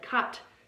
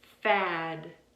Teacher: if that's a voiced ending the vowel before it will take a little bit longer